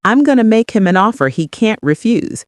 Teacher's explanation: Shadow and notice how make him in compresses slightly.